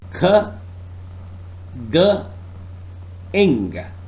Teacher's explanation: Velar. Soft palate and back of tongue are the articulators. The sounds produced are k, g, ing.